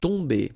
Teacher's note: you don't pronounce the m at all so it's really a nazal so it goes in your nose